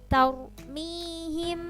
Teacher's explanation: Yang perlu diperhatikan adalah makhorijul huruf pada huruf ro, ha, ha. Nah, karena ro ini didahului fathah harus tafkhim